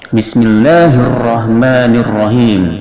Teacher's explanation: Bismillah hukumnya adalah tarqiq, tipis, dia dibaca a dan dipanjangkan 2 harakat karena termasuk mad ta'zim.